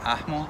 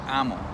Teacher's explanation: some variants of Nahuatl leave the H out altogether. So the Nahuatl word for no is pronounced atmo in classical Nahuatl, but might be pronounced ahmo, ahmo, or amo in modern Nahuatl.